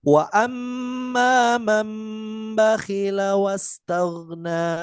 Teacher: dengan menyuarakan nun mati atau tanwin menjadi suara mim. · Nunnya dibaca huruf mim, diganti iklab, diganti dengan huruf mim. Jadi walaupun tampaknya nun tapi bunyinya bukan nun melainkan huruf mim. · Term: iqlab